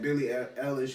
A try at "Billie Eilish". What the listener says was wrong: Before you keep going, I'm gonna need you to pronounce this girl's name right one time. Billie Eilish. This man said Billie Irish, Eilish. Eilish. Billie Eilish.